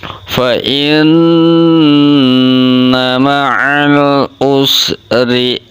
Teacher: ro-nya berharokat kasrah, tarkik tipis, ro-ri dibaca tipis, hukum bacanya itu tarkik